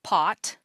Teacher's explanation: there is a brief moment where the voice is off before turning on for the vowel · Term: Voice Onset Time